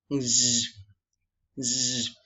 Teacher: it is a sound made by partially blocking the air, which creates an audible friction moving through your mouth, and it is a voiceless sound. And it is also a post-alveolar sound. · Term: fricative sound